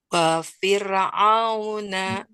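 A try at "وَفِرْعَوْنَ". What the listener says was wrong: Kurangi ro-nya. Wa fir. Jadi jangan sampai dia wa fir'auna. Sekali lagi wa fir. Rahangnya rahang tipis. Wa fir'auna.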